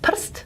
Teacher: The r goes into the nucleus. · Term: syllabic consonant